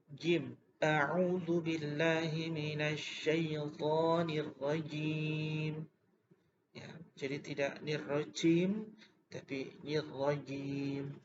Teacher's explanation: bukan di ujung lidah tetapi pada tengah-tengah lidah